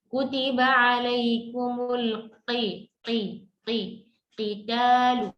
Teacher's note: huruf qaf dari mana keluarnya? Dari pangkal lidah.